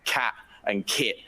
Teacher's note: But this final position T in my English, my tongue doesn't go anywhere up there. It's called a glottal stop instead · This is just your glottis closing and releasing suddenly. So there's no T sound for me when I say cat and kit